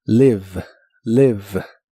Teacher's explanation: La i de esta palabra se pronuncia de manera muy corta y suena ligeramente como e live. La v o b chica como la conozcas, es labio dental y vibrante en inglés.